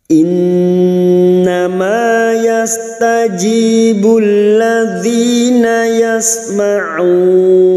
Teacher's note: Nun yang bertasdid gunnah musyaddadah kita dengungkan selama 3 harokat.